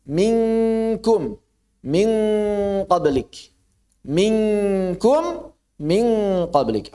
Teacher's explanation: Qaf dan kaf. Maka saat bertemu qaf dan kaf langsung sentuh kuat. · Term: ikhfa